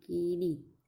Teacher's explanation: કે બિન વર્તુળાકાર બને છે ઉદાહરણ તરીકે કીડી શબ્દ બોલીએ છીએ ઈ ના ઉચ્ચારણમાં જીભ ઉચ્ચ રહે છે અને હોઠ બિન વર્તુળાકાર બને છે · કેટલાક ઉચ્ચારણોમાં હોઠના 2 છેડા ખેંચાઈને જાણે લંબાતા હોય તે રીતે બને છે, એટલે કે બિનવર્તુળાકાર બને છે